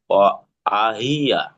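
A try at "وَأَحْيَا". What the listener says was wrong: ওয়া আহইয়া। জি, হিয়া না, ইয়াহ, ওয়া আহইয়া।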